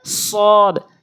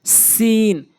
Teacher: উপরে নিচে দুই ধাতের আগাতে থেকে উচ্চারণ হয় পার্থক্যের দিক থেকে সদ মুখ থেকে একটু গোল হবে সিন মুখটা একটু উসার হবে